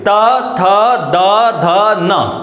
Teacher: दंती वर्ग। मतलब आपको इन वर्णों का उच्चारण करने में आपकी जो जीभ है, जो कहां पे टच होने वाली है? आपके दांतों को छूने वाली है। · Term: दंत व्यंजन